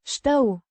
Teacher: the sh is a palatalized sound and the u sounds like a combination of e e and u